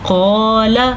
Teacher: موٹی قاف، قاف زبر الف قا اور لام زبر لا، اتنا ہم نے پڑھنا ہے لمبا کیے بغیر۔ اگر کوئی اس کو قالا پڑھے گا تو وہ بڑی غلطی کر لے گا اور صریح غلطی کرے گا۔